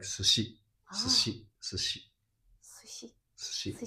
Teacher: This u is unpronounced because this is in between two unvoiced consonants.